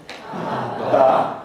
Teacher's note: you have this little burst of noise in the release there. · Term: plosive